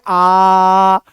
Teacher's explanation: आ में मुंह पूरा खुलता है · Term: विवृत्त स्वर